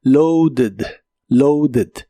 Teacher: Usa una ed y aquí sí suena la e, aunque muy suave.